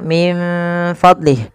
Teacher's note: Kita membacanya menyamarkan nunnya kepada huruf fa. Menyamarkan huruf nun kepada huruf fa ya,